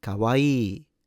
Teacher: First and foremost, double E sound at the end, and you need to pronounce both. Also, don't stress any of the syllables or mora